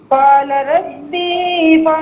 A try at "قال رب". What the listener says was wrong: نہیں ربی میں با کو کھینچیں گے نہیں.